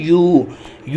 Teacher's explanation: जैसे कि अब हमने प्रोड्यूस किया यू अब प्रोड्यूस हुआ तो हमारे दोनों lips rounded shape, circular shape में आ गए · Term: राउंडेड साउंड्स